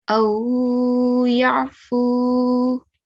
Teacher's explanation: Okay, now if we were to pause on this word, we already know, because we learned this rule, the fatha will change into sukoon, and then we'll say Aw yarfu. Okay, and see how I'm prolonging both vowels. Okay, because the first vaw is an example of vaw leen, and the second vaw is example of vaw mad.